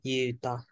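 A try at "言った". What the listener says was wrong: You said yuta. That's Yuta. Two characters right here. It'd just be I. Ita.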